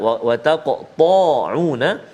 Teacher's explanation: qaf ada qalqalah dan tebal dekat situ, huruf isti'la, ta huruf isti'la, wa taqta'una.